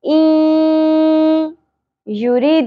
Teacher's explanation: دال ساکن کے بعد قلقلہ ہوگا حروف قلقلہ کون سے ہوتے ہیں قا طا با جیم دال